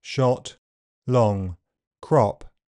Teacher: O is a short sound made with the tongue pulled back, the jaw open mid, and the lips rounded. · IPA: /ɒ/